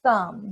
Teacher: you use your tongue and your teeth and you kind of blow air through your teeth while your tongue is there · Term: digraph th